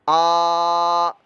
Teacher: حمزہ کھڑا زبر آ, اس کو ہم لمبا کریں گے, ایک الف دو حرکات کے برابر